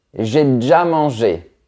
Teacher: le fait de retirer le E à l'intérieur de mots un peu plus longs